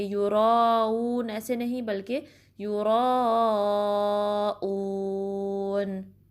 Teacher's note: حمزہ کو شارپلی پڑھیں گے، مطلب کہ سیپریٹلی اکسل حلق سے نکالیں گے